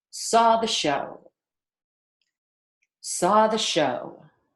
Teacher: Stress the other words. So linger on saw, rush through the, linger on show. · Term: rhythm of English